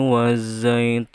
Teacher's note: Ti-nya dari lafadz wattini itu dibaca ganda karena ada tanda baca tasydid, dan juga dibaca panjang karena termasuk mad tabi'i, yaitu ya mati sebelumnya ada baris kasroh. Wazzaitun, za-nya juga dibaca ganda ditebalkan karena alif lam samsiah. Tun ya, tu-nya dibaca panjang.